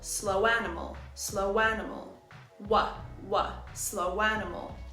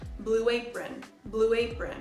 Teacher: when the first word ends in an ow or oo sound when our lips are round we insert a w sound to link The Sounds let's look at the phrase slow animal we add a w